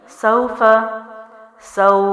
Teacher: یہاں پر واو لین کو 3 الف لمبا کریں گے کیونکہ حروف لین کے بعد حرف ساکن آ رہا ہے